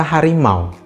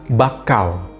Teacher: posisi lidah itu berbeda karena ada pergerakan lidah disitu itulah yang disebut dengan diftong